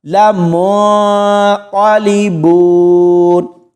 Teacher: یہاں دیکھیں بہت سارے لوگ اس لفظ کو ایسے پڑھتے ہیں، لمنقلبون، یہاں نون کے اوپر اخفا ہوگا، کیسے؟ لمنقلبون، یعنی آواز کو کھلا چھوڑنا ہے، تھوڑی دیر کے لیے نون کی آواز کو ہم نے پڑھنا ہے، من ایسے نہیں پڑھنا، لمنقلبون، اس طرح اس کو پڑھیں گے۔